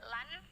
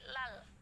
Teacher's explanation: Tapi jelasnya tidak bersuara nun ya. Tidak lan tapi lal. Jadi ditekan di huruf lamnya. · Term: idgham bila gunnah